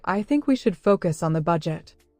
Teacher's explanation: The words think, focus, and budget are stressed. This helps people understand the key points.